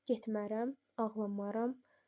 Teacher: Qeyri-qəti gələcək zamanda inkar şəkilçisi vurğunu özündən sonra hecaya ötürə bilir.